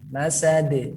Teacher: Dia qalqalah kubro, huruf dal itu ujung lidah bertemu dengan 2 gigi seri bagian atas